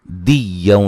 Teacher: دال کو یا سے سختی سے ملانا ہے اور یہاں نون تنوین کا ادغام مع الغنہ ہے